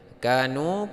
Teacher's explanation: Kanu ka mad tabi'i panjang dua harokat, nu panjang dua harokat mad tabi'i.